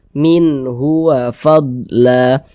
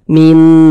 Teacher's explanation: tuh dibaca jelas min min tidak disama-samarkan dibaca jelas Min kemudian dia tidak didengungkan jadi dibaca pendek saja minhua Fadla Jangan dibaca Minu jangan dipanjangkan gu Jangan minnya jangan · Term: izhar halqi